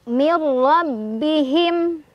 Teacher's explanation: Him idhar syafawi karena ada mim sukun bertemu wawu, dibacanya mimnya jelas ya.